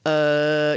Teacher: your voice box and that's where you're making a sound so if you put your finger on your throat and go uh you can feel a vibration